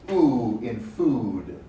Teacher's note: we do not close the mouth but rather we raise the tongue close to the top of the mouth we raise the tongue near the top of the nose so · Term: close vowels